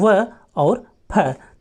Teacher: दंतोष्ठ, अर्थात किस वर्ण का उच्चारण दंत और ओष्ठ दोनों जगहों से किया जाता है